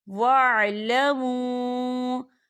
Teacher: واو ساکن ہے اور واو ساکن سے پہلے پیش ہے اور اس پر مد بھی ہے، تو ہم اسے 4 حرکت کے برابر کھینچ کے پڑھیں گے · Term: واو مدہ